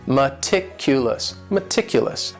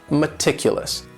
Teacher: That first syllable also has that schwa, that sound, that reduced vowel sound.